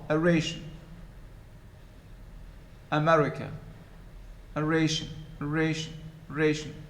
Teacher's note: the first syllable and the last syllable, the vowels in the first and the last are reduced to schwa